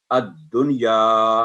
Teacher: दाल की आवाज़ 2 दफा आएगी, अद फिर दुन, अद-दुनिया, क्योंकि दाल पर तशदीद है